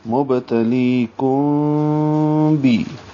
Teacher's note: اخفاء شفوی ہے، ہونٹوں کو بند کریں گے، قریب لے جائیں گے اور آخر میں با پہ بند کریں گے،